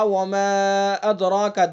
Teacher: مد منفصل میں تو گنجائش ہے ایک الف کی